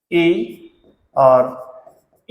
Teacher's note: ई और ई जो वर्ण होते हैं या स्वर होते हैं, ये होते हैं दोस्तों तालु से उच्चारित किए जाने के कारण इन्हें आप कह सकते हैं तालव्य